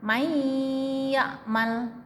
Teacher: nun mati ketemu ya itu suara nunnya masuk ke ya. May, hilang nunnya. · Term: idgham bi gunnah